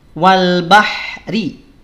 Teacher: Jadi sekali lagi, saat wasal huruf ro dibaca tipis. Saat waqaf maka huruf ro dibaca tebal.